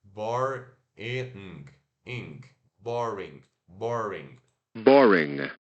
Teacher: E o I curto e o N que trava no céu da boca